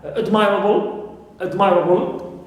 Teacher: So normally admire, okay, my in the verb, in the stem normally is stressed, but in admirable we stress am. So we have a shift of stress, okay, in admirable, although it contains able, which is normally neutral.